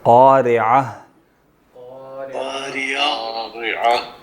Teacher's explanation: عین پڑھنا ہے، را کے بعد عین پڑھنا ہے، اور پھر ہا ہے تو ہا پہ وقف ہوگا، وہ آپ کی جو سینے سے آواز نکلتی ہے وہ نکلے گی